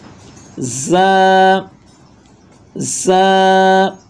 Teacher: تیزی والا حروف ہے یعنی سیٹی والا آواز اس میں آئے گا